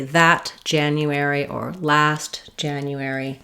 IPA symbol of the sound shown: æ